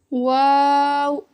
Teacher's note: होठों को गोल करते हुए ऊपर की जानिब खोलकर और फिर से होठों को गोल करते हुए बारीक आवाज में पढ़ें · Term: वाव